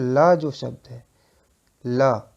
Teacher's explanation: जिन व्यंजनों के उच्चारण में जीभ तालु को छुए किंतु पार्श्व यानी बगल से हवा निकल जाए। ठीक है, मतलब जब आप उसका उच्चारण करेंगे तो उसके हवा जो है वो पार्श्व से मतलब बगल से निकल जाएगी। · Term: पार्श्विक व्यंजन